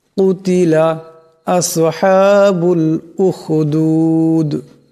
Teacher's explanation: কিন্তু এখানে দমসালে দাল সাকিন হয়ে যাবে। দাল কলকলা হরফ, আওয়াজটিতে একটি টক্কর খাবে।